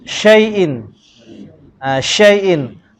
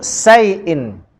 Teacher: Dan syin ni sebut bagi tafashi, angin dia kena keluar banyak.